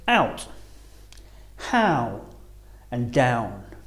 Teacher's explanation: same time rounding a little as we say the sound ow starting on the A and finishing on the uh or ooh